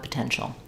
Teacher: and an sh sound um so sounds like Po tenal um so no T sound after the N um this T is part of the ti combination which makes